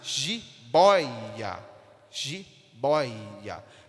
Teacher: tonicidade da mesma forma a palavra Jibóia é a sílaba Boy essa sílaba boi que tem mais tonicidade